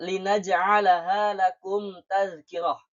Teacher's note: Maka kita tidak bisa dibaca dengung. Tidak bisa karena harus jelas mim sukunnya dibaca. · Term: izhar syafawi